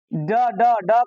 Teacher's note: टवर्ग का कोई भी वर्ण हो गया तो इसका उच्चारण स्थान क्या हो जाएगा? मूर्धा हो जाएगा।